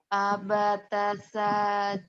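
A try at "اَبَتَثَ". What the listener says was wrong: Pendek. Abatasa. Abatasa.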